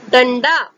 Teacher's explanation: ट वर्ग के ड का उच्चारण हो रहा है, इसीलिए ड से पहले ट वर्ग के पंचम वर्ण ण का उच्चारण होगा